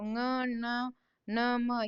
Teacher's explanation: ಇವು ಮೂಗಿನಿಂದ ಪ್ರೊನೌನ್ಸ್ ಆಗೋದ್ರಿಂದ ಅವನ್ನ ಅನುನಾಸಿಕ ಅಂತ ಕರಿತೀವಿ